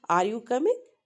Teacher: your voice usually rises at the end of the question